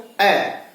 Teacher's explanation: जीभ बीच में है तो यानी कि मध्य स्वर है, ये मध्य स्वर हो गया ए।